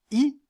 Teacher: le passage est large dans le cas dans le cas de la voyelle i qui est la voyelle la plus fermée la langue remonte assez près du palais